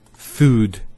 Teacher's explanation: So there's the elongation of the oo sound